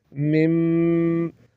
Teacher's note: یہ میم مشدد ہے اس کو غنے کے ساتھ پڑھیں گے